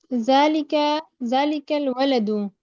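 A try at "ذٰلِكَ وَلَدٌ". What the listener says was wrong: यहाँ पे तो जालिकल वलदू नहीं लिखा हुआ ना। यहाँ पे तो अलिफ लाम नहीं लगा हुआ ना, लगा हुआ है।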